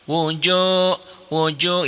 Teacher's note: dengan wau mati atau wau sukun jadi panjang berapa panjangnya satu alif dua ketukan, dua harakat